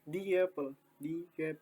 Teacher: jadi di antara di dan Apple ini ditambahkan suara atau bunyi ye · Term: intrusion